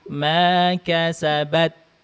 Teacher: Nah, ketika syiddah dulu baru masukkan ke hamas, baru dilepas. Hamasnya itu bukan tambahan angin tapi sisa dari huruf ta.